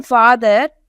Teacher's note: As it is in father, It is a low back vowel.